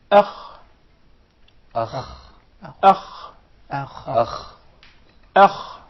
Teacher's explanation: The kha is a letter which is described as letter of tafkhim, a very heavy letter by nature. Okay. Sometimes when we come to pronounce the hamza which precedes the kha, we tend to make it heavy as well, while the hamza or the alif is always soft.